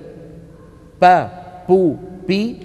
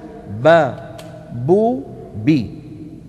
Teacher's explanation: اتى بها من الشفتين هو ما غير المخرج وانما غير الصفه ليس مع الباء العربيه هواء متدفق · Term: مجهور